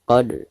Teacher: dal sukun sekaligus posisinya ada di tengah-tengah bacaan, maka dihukumi qalqalah sugro dan dibacanya harus dipantulkan dengan suara pantulan yang tipis